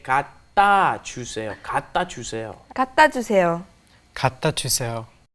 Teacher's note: Yes, right here, because there is no open space, there's no vowel in front of the consonant, it comes up against another consonant, it gets kind of swallowed. The sound doesn't come out.